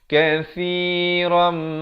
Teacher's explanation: Ra tanwin di atas bunyi ron. Tapi bila bertemu mim terus masuk beserta dengung. Idgham bi gunnah kadar panjang 2 harakat.